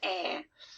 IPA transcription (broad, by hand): æ